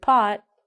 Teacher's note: so when we say the word pot we don't say the t